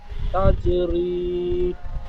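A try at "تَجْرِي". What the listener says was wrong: তা জিম যাবার তাজ হয়ে গেছে, তাজ হবে না, জিমটি কলকলা হবে। তা জিম যাবার তাজ। বানান করবার সময় যেমন উচ্চারণ করবেন, জিম কলকলা করে, এবং রিডিং পড়বার সময় তো রিডিং।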